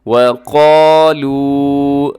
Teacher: اس آیت مبارکہ کے اندر دیکھیے گا، سب سے پہلے لفظ ہے وقالوا، واو پہ آپ کے ہونٹ گول ہو جائے اور قالوا، قاف کو اپنے موٹا پڑھنا ہے، اسے کالو نہیں پڑھنا بلکہ قا، اپنی طرف سے کوشش کر کے آپ اسے ضرور موٹا پڑھیے گا۔ وَقَالُوا، لو کو بھی لمبا کرنا ہے کیونکہ یہاں واو مدہ ہے